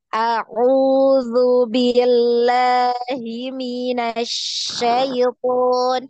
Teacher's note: ain ini di jelas ya bacanya ee dari tenggorokan bagian tengah